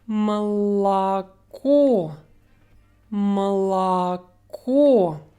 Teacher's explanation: 2 syllables away from the stressed syllable, O will sound like a very short sound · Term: schwa sound